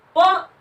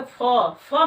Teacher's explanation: प जो है इसमें कम मात्रा लगेगी, और जब कहेंगे फ में वायु की मात्रा अधिक लगती है।